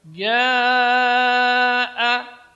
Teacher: jim juga termasuk huruf syiddah, keluar dari tengah-tengah lidah, tidak boleh keluar udara ketika mengucapkannya